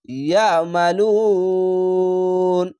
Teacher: আইনটিকে মোটা করে গলা চিপে